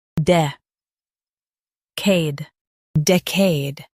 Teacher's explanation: Stress the dec syllable and keep ade smooth.